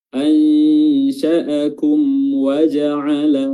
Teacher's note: di sini mim sukun bertemu waw, hukumnya adalah izhar syafawi. Mimnya dibaca izhar atau dibaca jelas. Dan syafawi artinya maksudnya adalah huruf wawnya ini yang keluar dari syafah, mulut.